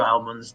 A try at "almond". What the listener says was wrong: both of you are using incorrect British English pronunciation. It's almond, like AHLMOND. Almond.